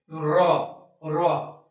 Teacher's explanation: তো এই কম্পন জাত যখন আমরা রটা উচ্চারণ করব তখন আমাদের কিন্তু দেখবা মুখ থেকে ভিতর থেকে একটা কম্পন সৃষ্টি হচ্ছে। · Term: কম্পন জাতীয় ধ্বনি